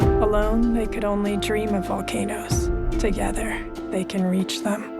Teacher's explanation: the rather overwrought narration is read by Miranda July in her most breathy tones